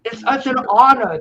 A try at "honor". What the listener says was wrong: Honor. You got to pronounce the H. It's such a honor.